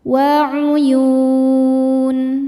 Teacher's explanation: Mad tabi'inya waw sukun sebelumnya baris dhammah, huruf yang disukunkannya huruf nun. Maka ya-nya panjang, boleh 2 atau 4 atau 6 harokat asal konsisten dalam sekali baca. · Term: mad arid li sukun